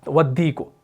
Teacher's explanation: मिसाल के तौर पर हम यहां पर लिखेंगे वाव ज़बर वा, आप अगर इसको पढ़ेंगे तो आप इसको नहीं पढ़ेंगे वल्दी को, आप इस वाव को इस दाल के साथ मिलाएंगे, इस अलिफ लाम को छोड़ दिया जाएगा, तो ये बनेगा वद्दी को।